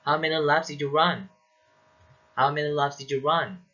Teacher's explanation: you use the rising intonation when asking wh questions functioning as echo questions